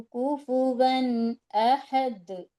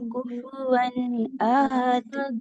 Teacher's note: جی تو تنوین 2 زبر کی تنوین ہے، اس کے بعد ایک الف تو ہے، اس کے اوپر کوئی حرکت ہی نہیں ہے تو وہ چھوٹ ہی جائے گا الف کے اوپر، جب کچھ نہیں ہے تو دوسرے الف کے اوپر زبر ہے تو وہ حمزہ پڑھا جائے گا. تو اس لیے 2 زبر کی تنوین کے بعد حرف حلقی کے 6 حرفوں میں سے حمزہ آ رہے تو ہم نون کی آواز کو ظاہر کر کے پڑھیں گے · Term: اظہار